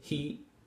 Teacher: in your dictionary you'll find the long version with the length mark the tiny little triangles remember but just in regular speech he uses the shorter e